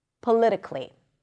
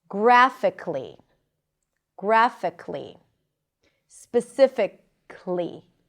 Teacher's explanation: It's probably not a mistake to pronounce the schwa, but usually people don't pronounce it. They just connect the k and the L.